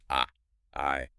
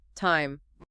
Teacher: You start with your jaw wide open on ah sound, and then you physically push your jaw up and pull your tongue forward to finish on a tidy sound. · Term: diphthongs